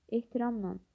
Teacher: Ehtiramla sözündə kök olduğu kimi qalır. La şəkilçisi nan şəklində tələffüz olunur.